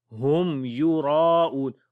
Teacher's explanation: را کو موٹا پڑھیں گے اور کیونکہ اس کے اوپر زبر ہے ، اور الف کو بھی موٹا پڑھیں گے کیونکہ الف سے